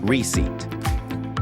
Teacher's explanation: The P is silent in American English, British English, and all other dialects. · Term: silent letter